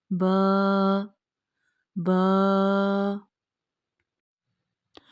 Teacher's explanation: बंद होठों के गीले हिस्से से बा अदा होता है